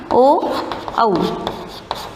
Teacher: कंठ और ओष्ठ यानी होठों से, दोनों की जगह से होता है वो उच्चारण स्थान है ओ, औ